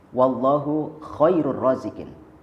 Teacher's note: huruf kha dalam kalimat khairun, yang mestinya makhrajnya dari pangkal tenggorokan, kemudian kita keluarkan atau kita ucapkan dari tengah tenggorokan, maka makhrajnya akan berubah, hairun misalkan.